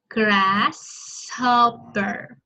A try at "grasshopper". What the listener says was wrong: Chỉ là chữ nhỏ thôi, không phải là sh. Like chỉ là nhỏ thôi, không phải là sh.